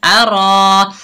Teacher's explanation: रा के ऊपर जबर, आगे अलिफ खाली, ये अलिफ मद्दा है, एक अलिफ की मिकदार खींच कर पढ़ेंगे, रा को मोटा पढ़ेंगे